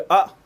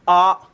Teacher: अगर आप कहोगे अ, तो देखो जल्दी खत्म हो गया, आ तो समय क्या लगा, ज्यादा लगा। तो छोटे आ को बोलने में आपको कम समय लगेगा और बड़े आ को बोलने में आपको क्या लगेगा, ज्यादा समय लगेगा। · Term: ह्रस्व स्वर